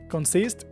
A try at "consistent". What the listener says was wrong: Consistent. Con la T a la fin. En el fin.